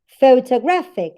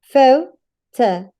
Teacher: That's why it has the primary stress. Now, the syllable pho is the second one in strength. That's why it has the secondary stress. The same happens with anthropology.